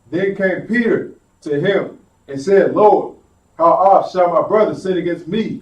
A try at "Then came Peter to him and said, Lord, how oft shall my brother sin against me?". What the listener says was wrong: You kind of went a little fast. Slow it down just a little bit.